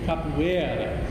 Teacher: in Portuguese, Brazilian Portuguese, the emphasis is on the second to last syllable. So it's not the last one.